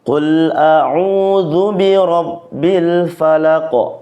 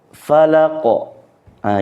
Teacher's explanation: ada yang membacanya itu dilamakan qalqalahnya maka yang benarnya adalah dipantulkan secara jelas